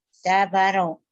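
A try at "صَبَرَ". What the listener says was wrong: Sa. Jabaro melulu. Sa. Pak ketukar melulu ya Pak sama sa nih.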